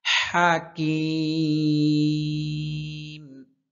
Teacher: হলকের মধ্যখান থেকে হায়ের উচ্চারণ হয়।